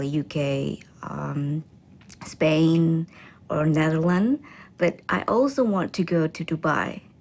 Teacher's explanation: She then lists the countries with her voice pitch rising until she ends with a level voice for Dubai.